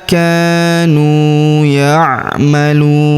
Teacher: Huruf lu kita panjangkan dua, empat atau en harakat karena di depan huruf lu terdapat wau sukun sebelum huruf pemberhentian dan huruf pemberhentian huruf na kita sukunkan atau kita matikan